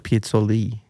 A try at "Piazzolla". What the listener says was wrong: The A on the end.